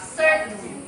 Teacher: That it says na hindi lahat na if the T is preceded by hindi, only in unstressed position. T is unreleased or held before N